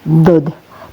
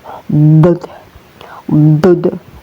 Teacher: Yang penting bunyinya dod ya, keluarnya dari samping lidah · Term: huruf dod